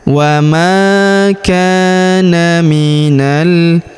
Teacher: huruf na langsung sambung ke huruf lam yang berharakat sukun. Langsung masuk ke sini. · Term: Alif lam qamariah